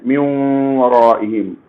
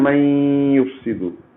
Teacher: نون ساکن اور تنوین کے بعد یومن یا وہ میم نون آتا ہے تو ادغام تو ہوگا، ناقص ہوگا، جس کو ادغام مع الغنہ کہتے ہیں